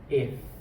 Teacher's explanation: The F sound, I put my teeth against my lips and I push out.